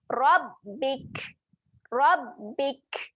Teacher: Bila kaf mati, dia ada sifat keluar angin. Jadi kita kena keluarkan angin pada kaf tu.